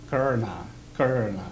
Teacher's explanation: that R sound, that R colors the vowel